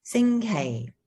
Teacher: the high tone sing with the low tone kai